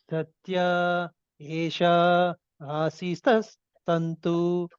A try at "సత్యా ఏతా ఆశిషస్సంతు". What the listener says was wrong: సత్యా ఏతా ఏషా కాదు, ఏతా అది